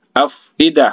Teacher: harus ada keluar angin sedikit dari kedua belah bibir kita